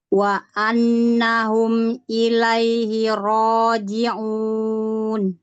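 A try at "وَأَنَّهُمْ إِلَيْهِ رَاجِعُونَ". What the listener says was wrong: Nah, ada nun tasydid ya. Ditengungnya lebih panjang. Jadi jangan wa annahum, tapi wa annahum. Nah, lebih panjang sedikit.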